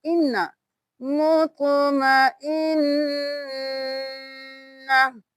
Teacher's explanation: نون پہ غنہ ہوگا، ناک میں آواز لے کے جائیں گے اور دیر لگائیں گے